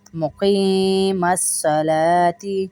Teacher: مقیم الصلاۃ، صلواتی نہیں ہوتا، یہ صلاتی ہوتا ہے، مقیم الصلاۃ، قاف کو موٹا کریں گے اور نون یا نی جو ہے اس کو بھی تھوڑا سا کھینچیں گے ایک الف کے برابر کیونکہ یائے مدہ ہے